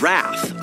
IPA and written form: ræθ (Wrath)